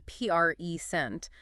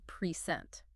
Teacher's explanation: The general rule of thumb is that nouns carry the heavy stress on the first syllable, while verbs carry the stress on the second. So a gift you give someone is a present, but the act of showing them something is to present.